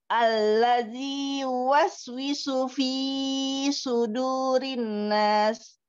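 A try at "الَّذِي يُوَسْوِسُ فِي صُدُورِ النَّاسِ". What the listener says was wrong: Fi sudu asli saja 2 harakat.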